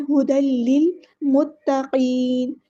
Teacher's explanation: تا مشدد ہے، اسٹرونگ ادا کرنا ہے، ایک بار ساکن کر کے ایک بار اس کی حرکت کے مطابق۔